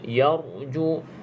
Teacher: ra tersebut mati sebelumnya huruf yang berbaris di atas. Okey, kena baca dengan bacaan yang tebal.